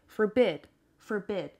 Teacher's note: And the stress is on the second syllable.